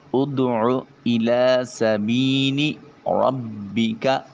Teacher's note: را کے اوپر زبر ہے، موٹا اور پر کر کے ادا کریں گے۔